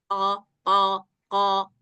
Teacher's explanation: Nah, jadi qof ini dia masuk kepada salah satu huruf berat. Maka ketika mengucapkan qof, pangkal tenggorokan kita ini harus terangkat untuk menunjukkan bahwa qaf ini adalah huruf yang berat